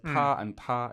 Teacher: Yeah, so he says, I don't hear fifth tone, I hear first tone, but the pitch of the first ta is a higher pitch than the second ta